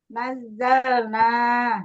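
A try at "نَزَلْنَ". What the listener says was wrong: Nah, nanya pendek, Bu. Ya, tadi kan nahnu nazalna.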